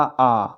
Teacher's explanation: जिस स्वर के उच्चारण में मुख सबसे अधिक खुलता है उसे क्या बोलते हैं? विभ्रत स्वर।